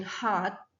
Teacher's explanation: Dan ketika kita mengucapkan kata A as in hot, ya, A as in hot, itu dia berada di bawah, low vowel as in A.